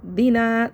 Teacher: دینا الف مدہ کو کھینچ لیں گے، الف سے پہلے زبر ہے